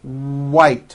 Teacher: It's not vite with a V, it's white with a W.